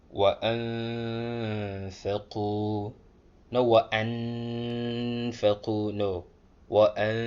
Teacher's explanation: the sound of the meme or the noon would be hidden a little bit